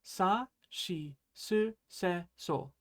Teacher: Remember, it's shi and not si because Japanese doesn't have the si sound.